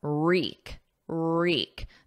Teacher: There's no W, it's silent. So it starts on a R, and then the vowel is E